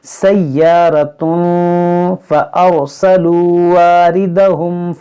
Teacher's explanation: یہاں را ساکن سے پہلے زبر ہے، اس را کو موٹا کریں گے۔